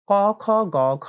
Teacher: তো অল্প প্রাণ ধ্বনি যেগুলোকে আমরা বলছি সেটি হচ্ছে একটি পর্বে, অর্থাৎ ক পর্বের ভেতরে ক, খ, গ, ঘ এই ৪ টিকে যদি আমরা ধরি, তাহলে ১ম একটি অল্পপ্রাণ হবে, পরেরটি মহাপ্রাণ। আবার ৩য় টি হবে অল্পপ্রাণ, ৪র্থটি হবে মহাপ্রাণ। অল্পপ্রাণ, মহাপ্রাণ, অল্পপ্রাণ, মহাপ্রাণ এইভাবে আসলে যাবে।